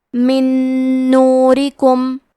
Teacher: نون حروف الادغام بغنہ میں سے ہے، ادغام کا معنی ہے حرف کو حرف میں داخل کرنا، تو ہم نون ساکن کو دوسرے نون میں ملا کے ایک ہی نون غنہ اور تشدید کے ساتھ پڑھیں گے